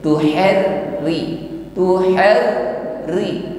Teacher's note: Masih ada getaran di ujung lidah, tetapi karena di sini ra memiliki kasrah, vokal bawah, maka r termasuk dalam hukum tarqiq. Getarannya harus ringan, Tuharri, tuhar ri, ya, ringan, jangan bilang tuhari, tidak tebal, ringan atau tipis.